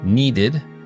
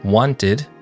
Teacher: suena como id después de los sonidos T y D. Por ejemplo, needed después del sonido D.